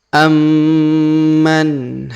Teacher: huruf Ma berharakat tasdid maka kita tahan dan kita tekan